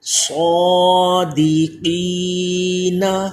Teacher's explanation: صاد حروف مستعلیہ پر کریں، اس کو موٹی آواز ہو، قاف بھی حروف مستعلیہ اس کو بھی پر پڑھا جائے، دال باریک، صادقین، وقف کی حالت میں صادقین، تو وقف کی حالت میں یہ جو نون کے اوپر زبر تھا یہ ختم ہو گیا۔